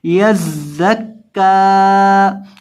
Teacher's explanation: زا میں سیٹی کی آواز پیدا کر کے پڑھیں گے